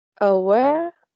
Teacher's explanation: It has two syllables, and the stress is in the last syllable.